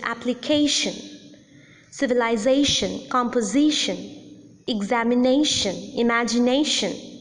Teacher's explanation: So the rule is that words ending in ion have the primary accent on the last syllable but one, which means the syllable preceding the suffix